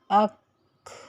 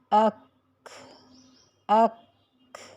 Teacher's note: پہلے آواز کاف کے مخرج پر جا کر بند ہو گئی اور پھر کھا کی ساؤنڈ آئی